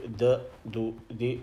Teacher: tip of the tongue touches the back of the upper front two teeth. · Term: dal